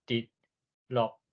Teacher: 饭，青会讲翠，黄会讲花，软会讲软。手的会讲碗，这就是另外一种腔口差，啊，这伫宜兰腔上有特色。好，再来就是声调，这种声调啊，伫第八调上明显。伫第八调啊，大概来当分做3种啦。较南部的即马教育部的书典，是以南部的做第一优势腔，所以你听到教育部的书典，若是伊讲第八调的时阵，是以高雄腔做标准。南部的第八调像讲这滴甲落拢是较悬的降落高降的音，滴落。 咱若是中北部较济拢是读做较低较平